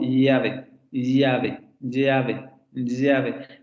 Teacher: Es el fonema palatal aproximante lateral sonoro.